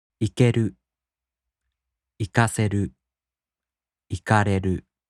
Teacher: In the flat type verbs, even if they turn into these three forms, they have no accent. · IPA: [ikeru] [ikaseru] [ikareru]